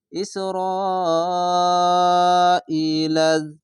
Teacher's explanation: ই লাম জাল জবর লাজ ইসরা ইলাজ এটি হচ্ছে মোটা চিহ্ন এর নাম হচ্ছে মাদ্দে লাজিম চার আলিফ টেনে পড়তে হবে